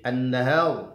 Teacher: ada nun bertasydid an-nahar, maka digunahkan, dengungkan bunyi nunnya, ditahan sedikit, didengung ya.